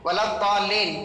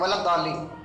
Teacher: 6 حرکات کے برابر کھینچنا ہے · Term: مد